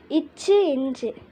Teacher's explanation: நாவின் நடுப்பகுதி நடு அன்னம் இடைப்பகுதி பொருந்துவதால் ஒலிக்கிறது